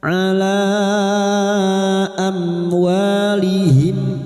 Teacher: Am mim sukun bertemu wau izhar syafawi. Mim sukun dibaca jelas tanpa mendengung.